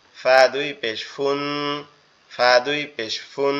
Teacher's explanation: ফাটা হচ্ছে আমাদের উপরের দুই দাঁত নিচের ঠোঁটের পেটের সঙ্গে লাগবে, লেগে উচ্চারিত হবে।